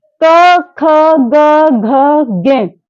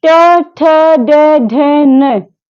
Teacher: क वर्ग कंठ से आया और ट वर्ग मूर्धा से।